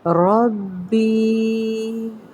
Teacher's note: را کو پر کیا جائے گا، را پہ زبر ہے، با اور یا مدہ کا قاعدہ۔